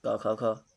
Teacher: ये कंठ से बोले जाते हैं